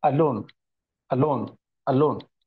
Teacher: loan loan loan Al loone Al loan okay so a is not getting prominence but loan is getting prominence